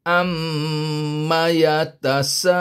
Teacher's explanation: Ma tak panjang. Ma 1 harakat terus masuk kepada yatasa.